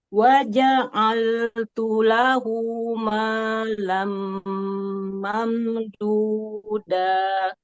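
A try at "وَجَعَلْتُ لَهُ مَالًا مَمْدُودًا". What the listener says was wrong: Alhamdulillah. Barakallahu fiik Bu Dokter. Sudah cukup baik.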